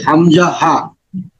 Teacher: 1 নম্বর মাখরাজ আছে হলকের শুরু হইতে হামজা হা